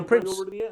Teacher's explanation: Print. You don't pronounce the T, you jump right over to the S and you say prints.